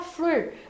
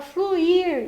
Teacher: O fluir, você não fala flur, você fala fluir, então você faz separação.